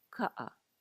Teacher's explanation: K is also going to be similar to the English K or C, except it's a little less aspirated. In other words, there's less air coming out.